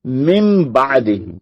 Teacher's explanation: نون ساکن کے بعد با آئے تو نون کی آواز بدل جائے گی میم میں. اس کو کہتے ہیں اقلاب، یعنی ہم نے بدل ہی دیا اس کی آواز.